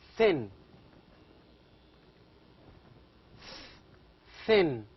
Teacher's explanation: TH, are pronounced as tip of the tongue behind the upper front teeth. You have to say, you have to make your tongue, the tip of the tongue, touches the upper front teeth to produce thin.